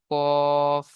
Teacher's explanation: জীবের গড়া এবং তার বরাবর উপরের তালুর সাথে লাগিয়ে উচ্চারিত হয় 2 নক্তাওয়ালা কফ